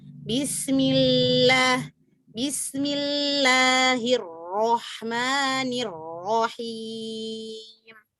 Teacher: Lamnya, tawasudnya dia tidak rokhwa, tidak syiddah.